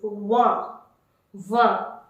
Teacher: Now the number 20 is, how to say number 20 is vingt, vingt. T is completely omitted and N will take the nasal sound.